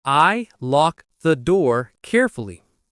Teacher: Lock the door becomes lock the door. The K connects to the TH.